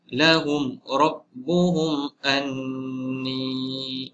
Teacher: Yang kedua dalam contoh ini juga sama, mim mati bertemu hamzah. Jadi juga hukum izhar syafawi pendek.